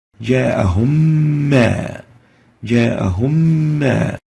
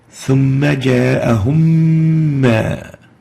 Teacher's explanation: Meem Sakinah with Meem following it, and we'll notice that we don't show the sukun here on the first Meem, but a shadda on the second Meem which is now appearing in green, indicating idgham with ghunna. Still Meem plus vowelized Meem, Meem with fatha, results in idgham, which is given the color green.